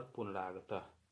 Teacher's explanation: विसर्ग का परिवर्तन र में हो गया है